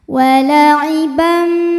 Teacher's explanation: karena ada tanwin fathah menghadapi huruf mim maka Kalau diteruskan ini bacanya dileburkan ke mim tanwinnya disertai bunyi dengungan tahan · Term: idgham gunah